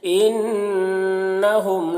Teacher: ان نون مشدد غنہ ہوگا، میم میں اظہار شفوی ہوگا